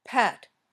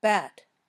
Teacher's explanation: when you say p you shouldn't feel vibration in your throat when you say B you should feel vibration